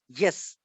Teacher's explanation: इसी तरह अगर वो यस हम कहती, यस, अब मैनर तो साफ ये रगड़ से निकल रही है, प्लोसिव नहीं है, लेकिन प्लेस इसकी जो है वो तालू के, हार्ड पैलेट के करीब, चूंकि ये जुबान हमारी जा रही है, ठीक है, इसलिए ये पैलेटल साउंड हो गई।